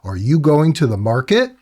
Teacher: I can end a sentence but with a bit of uptalk. I can raise the frequency of my speech, the pitch of my speech, to indicate a question